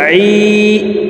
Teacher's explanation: আইন হরফকে হলকের মধ্যখান থেকে উচ্চারণ করব, কারণ আইনের মাখরাজ হলকের মধ্যখান থেকে হবে